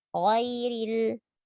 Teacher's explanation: Tetap sempurnakan fathah walaupun dia tebal